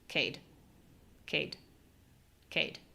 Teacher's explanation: now we're going to make a short unclear low syllable.